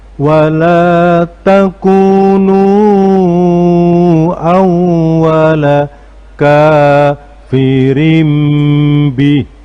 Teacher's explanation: karena ketemu dengan huruf ba maka dibaca iklab sehingga menjadi kafirim bih dan dibaca berdengung.